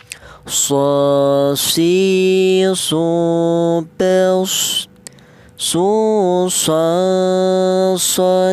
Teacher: huruf sad ini kuya huruf berasal dari ujung lidah menyentuh pangkal gigi seri bawah